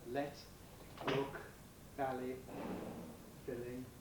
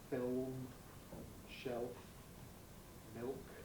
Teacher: clear L, which is used before vowels, and dark L, which is used before consonants and absolute final position